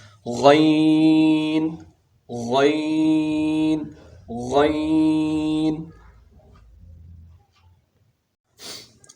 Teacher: غین جو ہے ادنی حلق یعنی حلق کے اوپر والے حصے سے ادا ہوتا ہے، اور اس کے آواز میں غرغرہ ہوتا ہے، غرغرہ. اور اس کو موٹا بھی پڑھنا ہے، موٹے حروف میں سے ہے، اس کو موٹا بھی پڑھنا ہے.